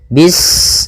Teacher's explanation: Ketika sinnya sukun, ini ada sifat shafir, dia harus kita alirkan nafasnya. Bis, nah seperti itu sempurna, baru baca mi.